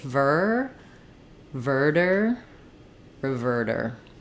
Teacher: you're going to need that pulled back tight R sound